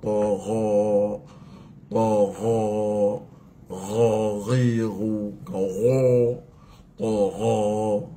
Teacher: ghain tu mesti tafkhimkan elok-elok